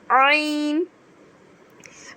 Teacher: سے یہ ادا ہوگا، حلق کے بیچ والے حصے سے، تو عین بھی حلق کے بیچ والے حصے سے ادا ہوگا